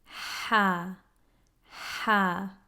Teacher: sound ha it feels like the flow of air is constricted it also sounds throaty it's definitely coming from the throat it also sounds like a whisper